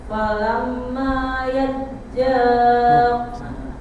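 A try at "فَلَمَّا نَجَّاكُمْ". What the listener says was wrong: najja bukan yajja.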